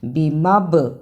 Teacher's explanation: بازر بھی، میم زبر با مب، با پر جزم ہے اور جزم کی صورت میں یہ حرف قلقلہ ہے، یعنی اس حرف کو ہلا کر پڑھنا ہے. ہلا کر پڑھنے سے مراد آواز کا پلٹ کر آنا.